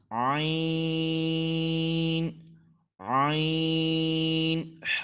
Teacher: حلق کے درمیان والے حصے سے ادا ہوگا